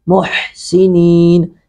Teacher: हा को हलक से अदा करेंगे